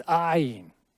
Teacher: The word for I, it starts with a letter, it's called ayin, and it goes ayin. It's the glottal stop where you're trying to force air through and trying to stop it at the same time.